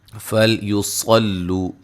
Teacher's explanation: صاد کو موٹا ادا کریں گے، لو واو مدہ ہے